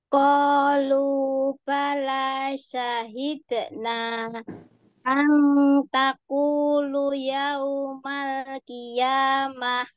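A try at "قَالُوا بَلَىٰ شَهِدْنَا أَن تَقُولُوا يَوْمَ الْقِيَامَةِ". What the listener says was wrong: Lu-nya panjang. Qalu.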